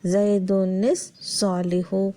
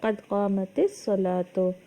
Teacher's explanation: اب پہلے ساکن کو زیر دے کر آگے ملا کر پڑھیں گے